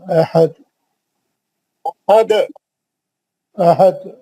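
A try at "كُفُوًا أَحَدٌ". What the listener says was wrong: ذرا دال پہ ذرا جان لگاؤ ذرا دال پہ.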